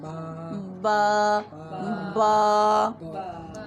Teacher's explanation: اب با کا مخرج دیکھیں، دونوں ہونٹوں کے اندرونی تری والے حصوں ویٹ پارٹس کے آپس میں ملنے سے با ادا ہوتا ہے